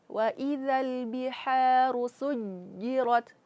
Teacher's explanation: Ah tahan suj tahan suara tahan nafas. Karena dia huruf jim tertahan suara dan tertahan nafas. Maka ada sifat qalqalah di situ memantulkan.